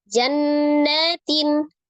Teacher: Jannatin, nun tasdid, nun musaddadah, wajibul gunnah